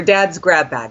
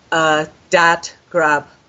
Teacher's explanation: So the B turns into a P, the D turns into a T, and the G turns into a K. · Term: devoicing